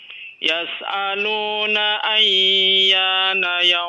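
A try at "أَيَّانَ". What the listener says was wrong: Ayyana, jangan ditahan terlalu lama ya.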